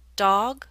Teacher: Your mouth is more open for the aw in dog.